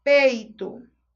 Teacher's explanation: Nota que o E é mais forte que o I. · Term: semivogal